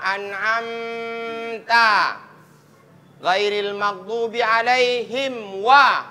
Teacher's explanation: Huruf apa dia ketemunya? Huruf mim sukun bertemu dengan huruf wa. Maka tidak boleh didengungkan. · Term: idhar syafawi